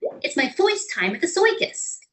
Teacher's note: Some New Yorkers even upglided the vowel R when it preceded a consonant, as in, it's my first time at the circus.